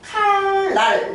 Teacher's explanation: 니은이 리을로 바뀌는 거. 근데 얘 같은 경우는 앞에 리을 때문에 뒤에가 발음하기 좋게 하기 위해서 방향이 이렇게 되지. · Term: 유음화